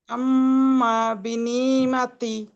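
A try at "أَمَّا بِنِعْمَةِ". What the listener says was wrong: আইনটা একটু সুন্দর হবে, মাশাআল্লাহ, গুন্না হয়েছে কিন্তু আইনটা একটু সুন্দর হবে। আম্মা বিনিআমাতি, নিয়া, মানে আইনটা হচ্ছে আপনি যত গলার ভিতর থেকে বলতে পারেন তত সুন্দর হবে, হ্যাঁ।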